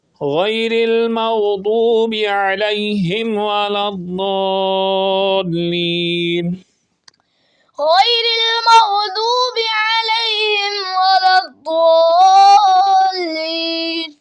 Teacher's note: ضاد کا مخرج ہوتا ہے زبان کا کنارہ اور اوپر والی داڑھوں کی جڑ سے